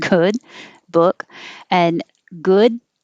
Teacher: so you hold the d good and the vowel is uh as in took and good book